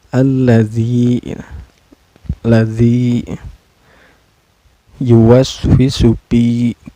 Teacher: Allazi ini dihukumi mad tabi'i karena ada ya sukun sebelumnya berbaris kasroh ya. Cara bacanya dipanjangkan 2 harakat ya. Allazi yuwaswisu pi.